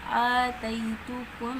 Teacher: جب میم کا میم ادغام ہوا ہے تو ہم نے غنہ کر کے پڑھا ہے